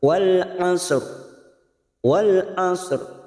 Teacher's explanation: ini adalah ro mati karena wakaf, didahului huruf sukun selain ya dan huruf sebelumnya berharokat dhammah, maka kita baca tafkim